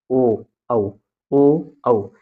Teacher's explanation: जैसे बोलते हैं आप ओ औ, ओ औ, तो होठ का भी इस्तेमाल करते हैं, कंठ का भी इस्तेमाल करते हैं और ओष्ठ का भी इस्तेमाल करते हैं, दोनों का इस्तेमाल। कंठ से आवाज निकलता है, होठ आपस में गोल होता है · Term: कंठ ओष्ठ